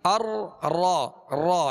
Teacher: اس کو ادا کرتے ہوئے آواز میں کپ کپاہٹ سی ہوگی، ار را را جیسے، لیکن اس قدر بھی کپ کپاہٹ نہ ہو، اس قدر بھی اس میں تکرار نہ ہو کہ ایک را کی جگہ کئی را پیدا ہو جائے، جیسے ار ار، یہ کئی را پیدا ہو گئی، جو کہ درست طریقہ نہیں ہے.